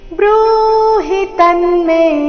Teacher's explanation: ಬೃಹ ದೀರ್ಘ ಹಿ ರಸ್ವ ಮುಂದೆ ತನ್ಮೆ ತಮೇಲೆ ಆಘಾತ ಮೇ ದೀರ್ಘ